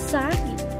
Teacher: Ang paraan ng artikulasyon sa letrang S ay pasutsot o fricative. Ang punto ng artikulasyon naman ay panggilagid o alveolar at ito ay may tunog.